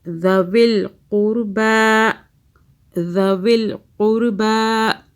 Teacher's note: ذال کو سافٹ پڑھنا ہے، قاف کو موٹا پڑھنا ہے